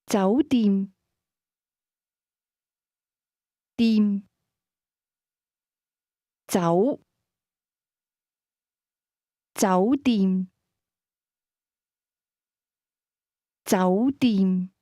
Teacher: Hotel is pronounced with a combination of mid- rising and midlevel tones.